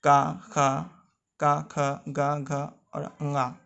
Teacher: ये सारे जो हैं कंठ में स्पर्श करते हैं, तो ये का वर्ग के हुए।